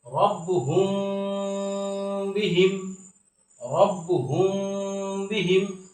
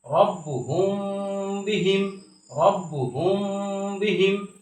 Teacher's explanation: এখানে এই মিম সাকিনের পরে বা আসছে। এই বা আসার কারণে এই মিম সাকিনটাকে গুণনার সহিত গোপন করে পড়ছি। যেমন রব্বুহুম বিহিম, এটাকে ইকফায়ে শাফবি বলা হয়, বা মিম সাকিনের ইকফা বলা হয়।